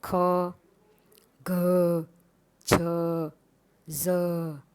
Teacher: જ્યારે બીજો છે મહાપ્રાણ વ્યંજન. એટલે જે વ્યંજનોનો ઉચ્ચાર કરતી વખતે વધુ પ્રાણવાયુની જરૂર પડે છે તેને આપણે મહાપ્રાણ વ્યંજન કહે છે